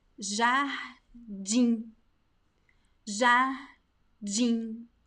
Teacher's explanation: So there is no actually M sound. So jardim, in, it's a nasal sound. There is no M or N sound. No, it's just a nasal I, a nasal E sound. · Whenever we see the M at the end of a word in Portuguese, we don't pronounce the M. We don't close our lips and do this.